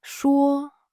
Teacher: 说 (shuō) is first tone, high and flat.